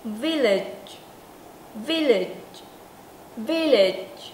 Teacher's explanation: hơi nó phun ra ít hơn mà cái cổ chúng ta rung nè